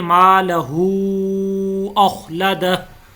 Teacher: ये हा के ऊपर मद है, तो इसको हम लंबा करके पढ़ेंगे